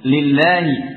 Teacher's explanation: menjaga kepada tarqiqnya lam pada lafaz lillahi dan lana. Dan untuk lillahi dan lana ini tidak seperti pada yang sebelumnya, karena ini adalah lafzul jalalah yang sebelumnya dengan kasrah.